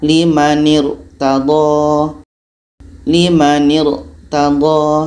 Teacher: Tebal. Pangkal lidah kita terangkat.